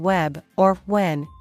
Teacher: When you make the w sound, hold it briefly and then glide smoothly into the vowel sound, because w is a voiced glide sound that prepares your mouth for the vowel that follows. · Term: w glide sound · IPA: /w/